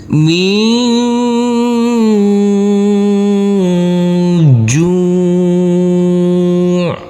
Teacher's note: Ini huruf ain harus ada aliran. Pada waktu kita wakafkan harus ada aliran.